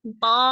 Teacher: Eh, kok maksudnya ee dibanting itu suaranya dari pangkal lidah diangkat kan tuh pangkal lidahnya itu naik tuh terus kasrahfkan pi gitu. ujung lidahnya tetap di tempat tumbuhnya gigi seri atas ya. Tapi pangkal lidahnya Umi angkat terus begitu kasrah suaranya dibanting afan ya pokoknya gitu.